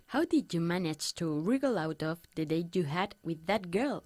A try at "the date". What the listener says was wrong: The date. Más fuerte del T. The date.